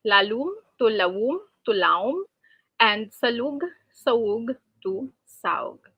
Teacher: Another change for intervocalic L is that it becomes W between the vowels A and U. Then the second vowel, which is the U, is deleted.